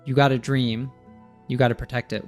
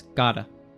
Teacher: one is got a with the article and the other one is got to with a preposition but both are pronounced as Gada